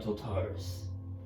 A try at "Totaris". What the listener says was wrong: Oh, Totalis. Totalis, right? Totalis?